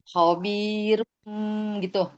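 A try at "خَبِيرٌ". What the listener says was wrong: Masih jangan jangan dinaikin.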